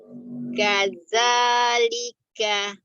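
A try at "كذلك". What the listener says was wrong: Ya, huruf zalnya tidak terbaca kaza ya. Kaza ujung lidahnya ada di ujung gigi seri bagian atas. Za.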